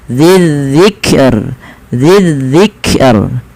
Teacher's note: dibaca dengan tipis Kenapa karena sebelum huruf yang dimatikan itu ada huruf kasrah · Karena sebelum huruf yang dimatikan itu ada huruf kasrah, maka dia dibaca dengan tipis rohnya, tidak dibaca wal Qur'ani dzidzikr, enggak, tapi dia dzidzikr, dzidzikr.